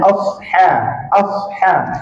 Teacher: Kenapa ha kita jadi tebal? Sebab kita tak turunkan balik pangkal lidah. Tu dengan asha. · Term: huruf ha